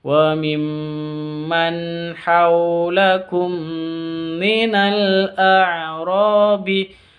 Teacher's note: mim sukun bertemu dengan mim dengung, cara bacanya dibaca dengung karena idgham mimi